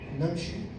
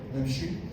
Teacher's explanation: نمشي ضغط على الأول، نمشي ضغط على المقطع الثاني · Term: النبر